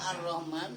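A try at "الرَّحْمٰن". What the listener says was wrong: Bukan Ar-Rahman. Itu kan sing jenengan waos kan itu masalah tasdid. Tasdid di takhfif kan begitu. Loh nanti khofafa itu air tanpa tasdid.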